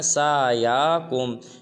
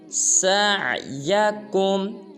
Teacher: سین کے بعد عین ہے، عین کو بھی خوب ظاہر کریں گے اور یا کو لمبا نہیں کریں گے